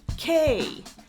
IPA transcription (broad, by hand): ˈkeɪ